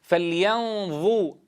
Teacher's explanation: بأن تضع أطراف الثنايا العليا على طرف اللسان بحيث يتولد الصوت من نقطة التصادم بينهما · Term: حرف الضاء